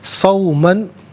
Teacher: تنوین کو اخفا کے ساتھ پڑھیں گے، ناک میں آواز لے جا کر گنگنانا اسے اخفا کہتے ہیں۔